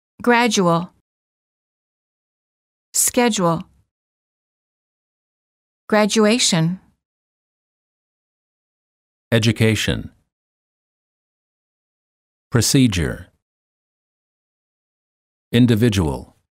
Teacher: D plus u is usually pronounced as J as in the word joke